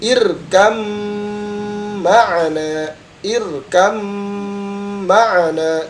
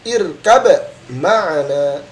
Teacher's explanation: Jadi baca ba-nya ini tidak dibaca ya, tapi langsung masuk ke huruf mim.